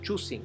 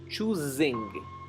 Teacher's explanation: es importante pronunciar zumbada la s